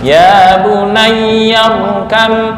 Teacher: Ya bunayya, ya yang bertasydid jangan ditekan lama-lama ya.